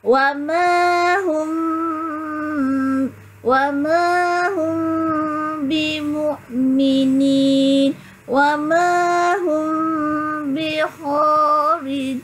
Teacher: Mim mati bertemu dengan ba. Menyembunyikan huruf mim serta dengung. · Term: Ihfa syafawi